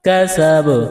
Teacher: کاف زبر کا، سین زبر سا، کسا، با زبر با، کسب، وقفن، کسب، قلقلہ کریں گے با پر، وقفن، کسب۔